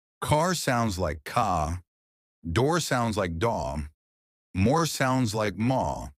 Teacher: The R disappears. British people don't pronounce the letter R at the end of words.